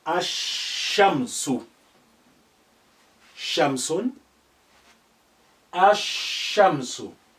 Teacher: You cannot hear the sound of lam. That's been suppressed, but it's remained there. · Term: sun letters